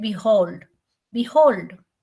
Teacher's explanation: I said behold so where is the stress it is on the hold part of it